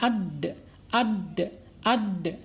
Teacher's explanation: asyidah berarti tertahannya suara kita ketika mengucapkan huruf Dal